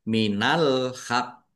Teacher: Kemudian waqaf maka maka qof nya dibaca dobel ya dan qalqalah ya ditampakkan pantulannya qalqalah kubra ini minal haq. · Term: kolkolah kubroin